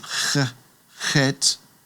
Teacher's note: So the letter Chet gets that guttural, soft guttural sound, ch, ch, chet, and it's transliterated many times as ch.